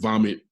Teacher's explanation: fricative which is forced air through a narrow opening and then vomit ends with a t which is a voiceless stop